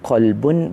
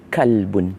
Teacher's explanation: jika kita tidak menjaga makhroj huruf qaf itu kita akan bertukar menjadi huruf Kaf